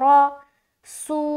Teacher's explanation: را کے اوپر زبر کی حرکت ہے، زبر کو جلدی پڑھیں، تھوڑا بھی نہ کھینچیں